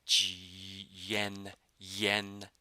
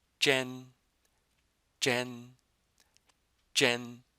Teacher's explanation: But in the Chinese, when your tongue is curled, there's no Y sound in there at all.